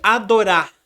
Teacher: A pessoa ela quase não pronuncia o som do R. Ela faz mais uma sopradinha. Adorar. É bem mudo.